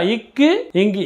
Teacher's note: நாவின் முதல் அன்னத்தின் அடியில் பிறக்கிறது